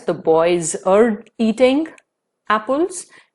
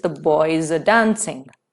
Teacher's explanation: r is followed by the word dancing which starts with the consonant sound da so in this case r will be reduced to mere weak vowel sound